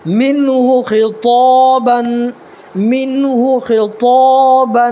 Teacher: اس خا کو تھوڑا پر کر کے پڑھیں گے